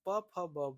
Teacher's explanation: और यह द्वयष्ठ व्यंजन इसे इसलिए कहा गया है कि जो होठ के दोनों भाग हैं ऊपर और नीचे के जब हम बोलते हैं तो इन दोनों का जो है आपस में जुड़ाव होता है तो हम इसे द्वष्ठ व्यंजन कहते हैं। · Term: ओष्ठ व्यंजन